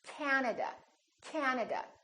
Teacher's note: at another word that has three syllables and also Three A's this time the first syllable is stressed this time this a is really long